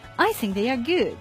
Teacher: my tone of voice fell at the end of the sentence which is showing that I am sure about that they are good